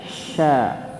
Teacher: shin dikeluarkan disebar udaranya ya, bukan sa tapi sya.